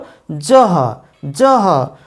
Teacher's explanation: এই জহ অর্থাৎ জয়ের সঙ্গে হ যুক্ত হয় এর উচ্চারণ হচ্ছে ঝ। বাংলায় আমরা এর ঝ উচ্চারণ করি, কিন্তু এর সঠিক উচ্চারণ যদি ধ্বনি অনুসারে উচ্চারণ করা হয় তাহলে হবে জহ।